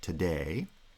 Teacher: the day forms a monosyllabic foot and the t is in a pre-foot syllable